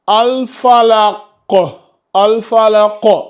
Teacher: Quand l'une de ces 5 lettres porte une soukoun, on fait ce qu'on appelle la qalqala. Donc, la qalqala, elle se fait par l'agitation du son lors de l'impact sur la lettre quand on la prononce.